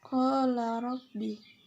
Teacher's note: Qala rabbi itu tajwidnya mad tabi'i karena huruf alif di fathah dan huruf ra dibaca takfim sebab berharokat fathah